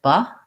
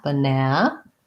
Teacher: it has second syllable stress and even though it has three letter a's it has the schwa in the first syllable sounds like ba and it's short then i have my clear